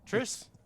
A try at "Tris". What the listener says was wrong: By the way, it's Tris, not Trish. Trish is like a girl's name.